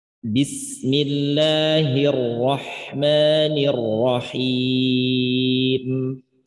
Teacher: Bunyi mim yang di akhir di sini tetap ada dengung sedikit, ya, dengungnya asliyah. Dengungnya asliyah, jangan sampai dia tidak terdengar jelas bunyi mimnya.